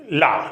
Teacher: इसके अलावा और ला क्या है, यानी पार्श्विक व्यंजन का मतलब होता है जिसकी व्यंजन के उच्चारण में हवा जो है ना जीभ के बगल से, पार्श्व भाग से निकल जाए, यानी बगलों से निकल जाए तो वो पार्श्विक कहलाता है, यानी हवा जीभ के बगल से निकल जाए तो ये पार्श्विक व्यंजन कहलाता है